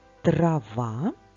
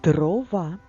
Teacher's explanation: звук т на початку слова трава глухий звук д на початку слова дрова дзвінки